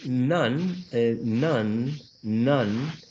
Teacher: So when you say none, none, there's some sort of nasality, some sort of nasal quality in this vowel sound.